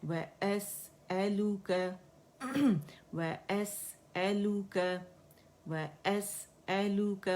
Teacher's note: हमज़ा आपको पता है आखिर हर्फ थ्रोट से अदा होता है